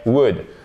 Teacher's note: C'est pas would, hein, ok? On ne prononce pas le L. Et c'est le même ou court que vous avez dans good, would, ok? Would.